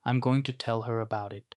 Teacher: going to болон tell her зэрэг үгс холбогдож дуудагдаж байгааг анхаараарай. · гэх мэдэгдэлд дууны өнгө буурах ёстой.